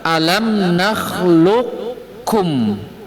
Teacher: Qaf dimasukkan ke huruf kaf